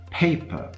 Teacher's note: If I say paper, you can hear that the pitch of the first syllable, the stressed syllable, was higher than the pitch of the second syllable